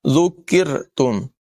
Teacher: ذال کی آواز بغیر سیٹی کے ہوگی